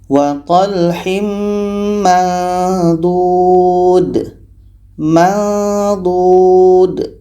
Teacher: lidah Ah ini D pada tepi lidah kita nih d dah bunyinya samar mendekati tempat keluar huruf d